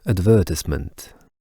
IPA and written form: ədˈvɜːtəsmənt (advertisement)